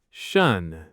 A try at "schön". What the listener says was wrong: The lips stay round.